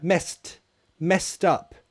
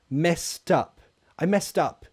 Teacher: Also, notice the pronunciation. The ED is a T sound.